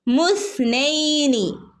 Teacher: ഹംസത്തുൽ വസലിന് ശബ്ദം ഇല്ലാത്തത് കാരണം നമ്മൾ എന്ത് ചെയ്തു മീമിൽ നിന്ന് നേരെ സയിലേക്ക് വന്നു